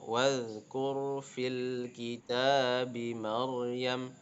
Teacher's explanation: Nah, kurnya ro-nya bertanda sukun, kafnya harokat dhammah, maka ro-nya tafkhim ya, tebal ya.